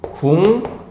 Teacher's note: 미음의 영향을 받아서 기억이 이응으로 바뀌었다